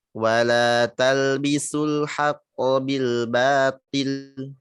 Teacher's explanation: Ya, ba-nya tipis, to-nya tetap tebal.